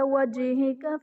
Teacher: جیم حرف قلقلہ ساکن ہے تو یہاں پر قلقلہ خوب ظاہر کریں گے